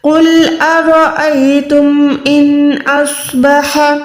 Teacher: یہاں پر را کے اوپر زبر ہے تو منہ کو گولائی کر کے را کو پراپر موٹا ادا کریں